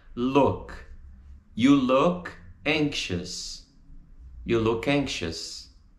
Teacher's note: A gente não pronuncia look com o som do U brasileiro. Tá entre o U e o O. Então fica look.